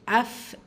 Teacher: அஃப் இதா ஃபா சுக்குன் பெற்று வந்திருக்கு, ஹம்ஸுடைய சட்டம், காற்றை வெளிப்படுத்தி ஓதணும்